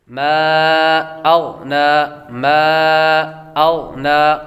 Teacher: غین حروف مستعلیہ میں سے ہے، اس لیے اس کو پر پڑھیں گے۔ حروف مستعلیہ کو ہمیشہ یعنی ہر حالت میں پر پڑھا جاتا ہے۔